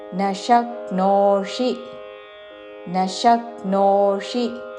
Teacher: తాళవ్య ష, ష దాని మీద ఆఘాత, శక్నోషి చివరిలో మూర్ధన్య షి హ్రస్వము